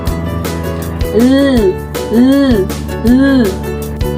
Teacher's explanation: Sa pagilid, ang hanging lumalabas ay sa gilid ng dila sapagkat ang dulong dila ay nakadiit sa punong gilagid. Ang halimbawa nito ay ang letrang L.